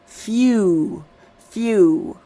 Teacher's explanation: When it has an F sound, the F sound, you often hear the Y